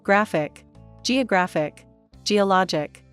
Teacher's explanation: on whether the stress is on the first or second syllable stress on the penultimate syllable penultimate means second from end